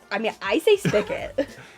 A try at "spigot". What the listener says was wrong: It's actually with the G. spigot.